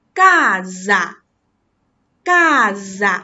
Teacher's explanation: 当一个▁s▁加在两个元音中间时，我们发浊音